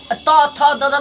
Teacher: त थ द का उच्चारण स्थान दंत से